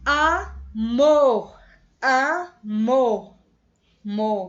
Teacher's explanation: Então, é bem mais forte. Então, ela é aguda, porque a mais forte é a última sílaba